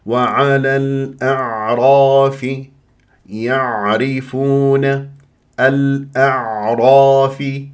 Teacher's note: والراء مفخمه لانها مفتوحه وتفخم الالف بعدها تبعا للراء